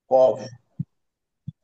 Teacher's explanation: জিহ্বার গুড়া হতে গুড়া তার বরাবর উপরের তালুর সঙ্গে লাগিয়ে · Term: মাখরাজ